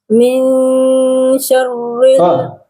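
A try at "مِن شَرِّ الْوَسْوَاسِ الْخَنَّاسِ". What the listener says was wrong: bukan syarr. Syarri tipis ra. Syarri. Min syarri.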